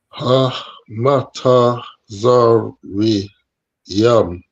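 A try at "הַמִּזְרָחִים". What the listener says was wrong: Very good, right? So you pronounce this as ha, which is perfect,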